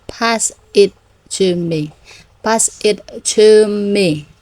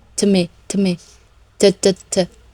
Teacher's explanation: And also notice that to changes to the schwa. To me, to. So this is happening a lot in English.